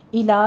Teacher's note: لام کو آپ نے موٹا نہیں کر دینا، لام باریک رکھنا ہے